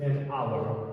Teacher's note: To'g'ri, birinchi harf undosh, lekin biz h harfini o'qimasdan our deb talaffuz qilamiz va shu sababli unli bo'lganligi uchun an hour.